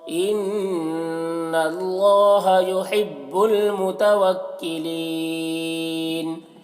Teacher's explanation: نون مشدد غنہ ہوگا اور اللہ کو پر پڑھیں گے۔